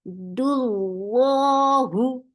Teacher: Dal is light, but lafz jalala is heavy.